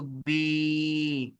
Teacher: ساتھ میں یا جڑ گئی تو بی، ایک الف جتنا کھینچیں گے